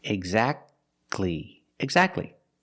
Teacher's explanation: Don't pronounce the T. Exactly. You go from the k sound to the l sound.